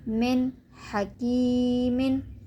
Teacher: یعنی نون کو ہم ظاہر کر کے پڑھیں گے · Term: اظہار